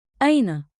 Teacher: Keep it rising at the end, curious, friendly.